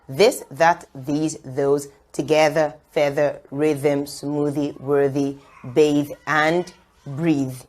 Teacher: for the voice th sound there'll be a vibration